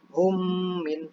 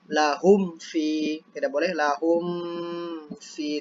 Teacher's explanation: itu jadinya humnya harus dibaca dengung, hum